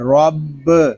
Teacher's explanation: پڑھیں گے، اس کو پڑھیں گے علیہم، را با زبر رب، را کو پر پڑھیں گے کیونکہ را کے اوپر زبر آ رہا ہے ، با مشدد ہے، اس کو جماؤ کے ساتھ ادا کریں